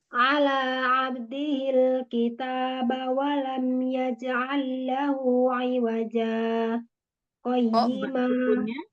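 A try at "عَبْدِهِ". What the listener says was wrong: Mbak sukunnya ketinggalan lagi.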